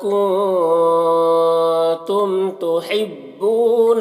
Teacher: میم میں اظہار شفوی ہوگا، میم کو ظاہر کر کے جلد پڑھیں گے۔